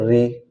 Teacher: फिर आती है री, ये जो री है, तो ये जो बोली जाती है मूर्धन्य है, ये मूर्धन्य स्वर है, ये मूर्धा से बोली जाती है